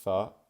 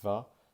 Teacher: when I say th my vocal cords are not vibrating